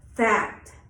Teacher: we use our vocal cords to pronounce the TH phoneme in the keyword that, which we refer to as the voiced TH.